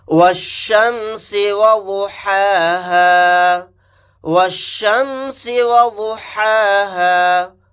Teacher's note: چھوٹا سین کو باریک سیٹی کے ساتھ ادا کریں گے · واو کو ڈائریکٹ شین کے ساتھ ملائیں گے کیونکہ شین کے اوپر تشدید ہے، یہ الف اور لام نہیں پڑھا جائے گا۔